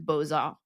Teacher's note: That's why I bring up this in relation to gâteau, because a silent consonant at the end of one word will attach itself audibly to the next word, like in the term beaux-arts, which normally you wouldn't pronounce the X at the end of beau, but it's attached to the arts afterwards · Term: liaison